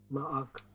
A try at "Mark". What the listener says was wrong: Mark. Don't separate the sound. Just pull it. Mark. No. Just one word. Mark.